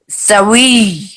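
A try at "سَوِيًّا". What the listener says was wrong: سویج دباؤ ہو، شد کا دباؤ ہو، سویج. ہاں، اس وقت بھی احتراز کہتے ہیں بچنا. مدہ سے حرف مدہ سے بچنا نہایت ضروری ہے، خصوصاً وقف میں زیادہ.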